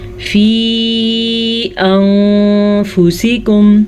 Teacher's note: इस मद की मिकदार तकरीबन 2.5 हरकत अरबिया है। 2 से 2.5 सेकंड तक हम इस मद को खींच के पढ़ेंगे। अंफुसिकुम, नून साकिन के बाद फा हुरूफ़ इख्फा में से है تو ہم نون ساکن کو چھپا کے غنّے کے ساتھ پڑھیں گے.